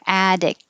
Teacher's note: And when you say k, don't release the k, hold it there.